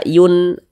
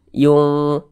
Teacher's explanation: Jangan dibaca yun, n-nya tuh jangan dibaca n sempurna, jangan dibaca yun, jangan, tapi disamarkan yung seperti itu. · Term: ikhfa hakiki